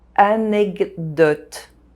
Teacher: The D sound modifies the K sound and it becomes a G sound.